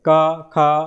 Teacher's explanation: इसके उच्चारण में गले में प्रत्येक वर्ग का पहला और दूसरा इसके उच्चार में गले में उस तरह से कंपन नहीं होता है जैसे आप जो उच्चारण करेंगे क ख यानी पहला और दूसरा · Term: अघोष